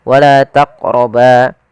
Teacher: Maka kita hukumi dengan bacaan qalqalah yaitu harus memantul. Kesalahan membaca qalqalah yang pertama tidak mantul